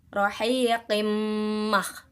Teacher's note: ada kasrotain bertemu dengan huruf mim, maka hukumnya adalah idgham bi gunnah, memasukkan dengan dengung